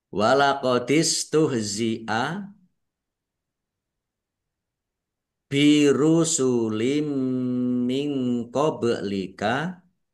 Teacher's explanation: Kasr tanwin bertemu dengan huruf mim. Bacaan idgham bighunah. Masuk dengan mendengung.